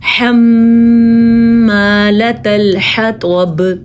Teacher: طوا کو پر پڑھنا ہے، ہا کو اپنی جگہ سے نکالنا ہے